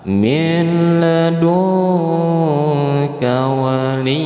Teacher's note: nun mati bertemu dengan kaf. Nah ini ikhfa hakiki ya, harus disamar-samarkan